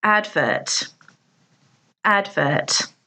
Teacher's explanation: there are two syllables and the stress is on the first syllable